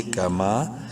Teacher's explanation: کاف زبر کا، میم الف زبر ما، ایک الف کے برابر، میم کو لمبا کریں گے الف مدہ کی وجہ سے